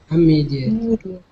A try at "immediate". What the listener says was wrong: There you go, immediate.